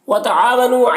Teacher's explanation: عین الف مدہ ہے، اسے ایک الف کے برابر کھینچیں گے۔ نون میں واو مدہ ہے، اسے ایک الف کے برابر کھینچیں گے۔